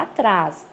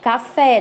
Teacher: nós temos uma oxítona, porque a sílaba tônica dela é a última